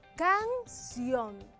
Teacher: según la pronunciación de esta palabra la fuerza está en la última sílaba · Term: aguda